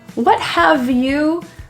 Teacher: The word have gets reduced to the V sound.